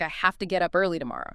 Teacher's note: Have to frequently becomes hafta